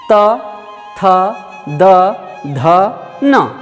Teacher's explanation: आपके ऊपर के दांत में आकर जीभ पीछे से छू रहा है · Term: त वर्ग